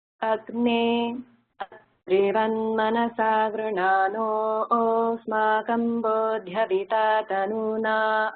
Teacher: So everything was a continuous flow except for that one place between Agne and Atrivan. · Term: pause